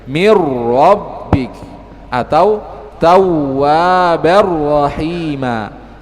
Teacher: Sama dengan huruf ra juga demikian. Ketika nun sukun atau tanwin bertemu dengan huruf ra, maka yang terbaca adalah huruf ra-nya. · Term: idgham bi ghairi gunnah